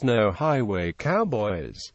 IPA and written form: ˌnoʊ ˈhaɪweɪ ˈkaʊbɔɪz (no highway cowboys)